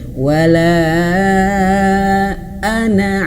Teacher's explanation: Alifnya tidak dibaca, sehingga dia tidak perlu dipanjangkan. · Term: Ana pendek